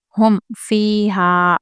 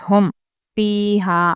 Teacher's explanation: جیسے اب یہ دیکھیے اظہار شفوی کی مشق، ہم فی ہا، دیکھیے ہاں میم پیش ہم فی ہا، میم ساکن کے بعد یہاں پر نہ تو با آیا ہے نہ ہی میم آیا ہے، تو اب ہم کیا کریں گے، یہاں پر میم کی آواز کو ظاہر کریں گے، یعنی کہ اس کو جلدی پڑھیں گے، ہم یہاں پر غنہ نہیں کریں گے